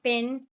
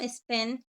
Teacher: the pronunciation of P in pin aspirated differs from spin unaspirated. This is phenomenon is known as allophones.